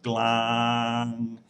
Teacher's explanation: it ends with the the ng sound and we can continue voicing that that word glam so that tells us it's a live syllable